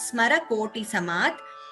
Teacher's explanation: There is no ma. Samat we are elongating because ma is a dirgha.